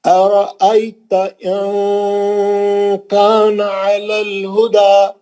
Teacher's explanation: अराअयता इन कान अलल हुदा, नून को छुपा रहा हूं यहाँ पे, आपको दिख रहा है नून का आवाज नहीं निकल रहा लेकिन गुन्ना निकल रहा। अच्छा, इख्फा का गुन्ना बोलते हैं उसको।